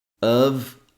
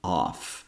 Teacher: F here actually sounds like a V sound